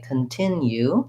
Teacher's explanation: and they would put this extra gliding yeah sound in so in american english we do have the yeah sound in continue